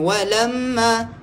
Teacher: mim sabdu wajib, baca dengung